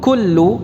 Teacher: ini kafnya tipis, tidak dibaca dengan tafkhim.